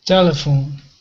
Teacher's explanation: syllables three yes the first is the more strong yes okay so the first syllable is stressed